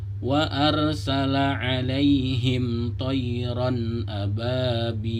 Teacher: fathatain yang bertemu dengan alif, maka dia disebut izhar, dibaca jelas. Tidak boleh didengungkan, tidak boleh disamarkan.